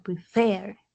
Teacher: mayor fuerza de voz en la última sílaba